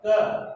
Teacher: तो क में से लास्ट में अंत में जो ध्वनि निकलती है वो निकलती है अ की। अगर आप क के साथ में अ को नहीं बोलोगे तो आप क को या किसी भी व्यंजन को नहीं बोल सकते हो, उच्चारित नहीं कर सकते हो।